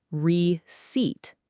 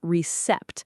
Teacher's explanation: The P is completely silent.